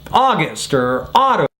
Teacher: There is no diphthong, it's just a straight ah sound.